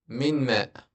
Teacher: Okay, for example, when I tell you min ma, this one, if I want to convert it, noon sakina after it is meme, and then first thing I combine them to one letter. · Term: idgham but with ghunna